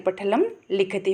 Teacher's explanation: ल जो है वो आधा है तो उसका उच्चारण बहुत जल्दी हो जाएगा और इसके ऊपर फिर अनुनासिक है तो उसको हम नाक से बोलेंगे